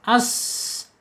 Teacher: Kemudian sifat yang tidak berlawanannya sin ini ada di as-safir ya, as-safir, yaitu ada suara desisan.